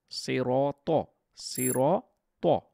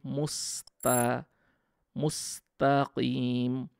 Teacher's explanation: এখানে ভারি করে ত বলছি